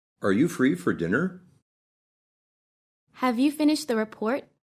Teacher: in English, as you know, most yes-no questions have a rising intonation.